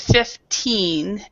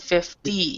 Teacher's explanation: you need to actually pronounce and stress the last uh the last syllable so you have fif and you really need to stress this